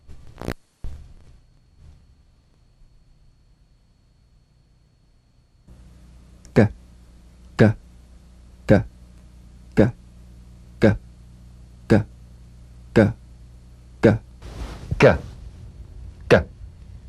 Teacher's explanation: The voiced tongue back plosive consonant G. Place the back of the tongue in gentle contact with the soft palate. Let the tongue spring away. Play this drum beat on the springing action of the back of the mouth without tightening, pressing, or pushing.